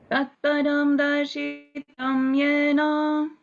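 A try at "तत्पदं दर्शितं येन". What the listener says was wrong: Tatpadam Darshitam, no, Darshitang Yena. Shitam is short vowel. Darshitang Yena.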